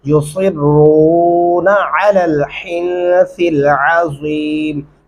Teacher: बारीक हा पढ़ेंगे और गुन्ना भी करेंगे और सा को नरमी से अदा करेंगे। सिल आइन गले से अदा करेंगे और यहाँ पे अज़ीम नहीं करना, अज़ीम ऐसे पढ़ना है।